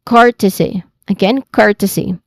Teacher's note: It's a it has a short e sound. So the primary stress here is on the first syllable.